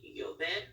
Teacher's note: so we see we have our double L's right here so instead of pronouncing it as an L you kind of pronounce it as a y